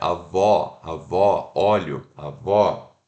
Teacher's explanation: A língua, estou mexendo na parte de trás. A minha abertura da minha boca é open mid, ela tá um pouquinho, ela tá meio aberta, tá? Então um pouquinho mais aberta.